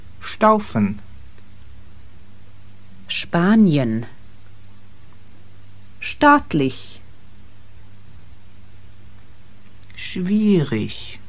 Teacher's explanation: In combination with T or P or CH, you get the SH sound.